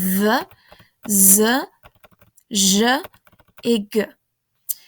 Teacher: À côté de ça, on a les consonnes voisées, c'est-à-dire que ce sont certes des consonnes, mais on les prononce en faisant vibrer les cordes vocales.